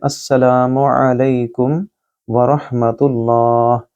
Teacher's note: لا کو لمبا کریں، آ گلے سے بولیے، اور لئی کیونکہ یا لین ہے اس کو لمبا نہیں کریں گے۔ را کو موٹا پڑھیں گے اور ہا کے ساتھ ملائیں گے اور ہا کو گلے سے ادا کریں گے